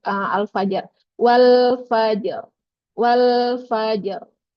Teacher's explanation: yang sempurnanya itu sekali getarannya sekali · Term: takrir